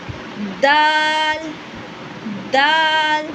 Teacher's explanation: So you know that the dal pronunciation, it would be the second posture. And the sound stops completely before it is released. Characteristic जो होगा आपका pronunciation का, it would be light. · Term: clear stopping sound